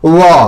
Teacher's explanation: अब आते हैं दंत, दंतोष्ठ से। दांत और ओठ से निकलता है, ये होता है हमारा व